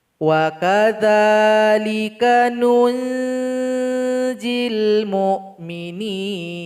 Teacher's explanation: nun ini dibaca dengung dan disamarkan kepada huruf jim